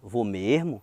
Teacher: é muito comum o acreano falar vou mesmo, e nessa entonação que dá uma confirmação de que ele vai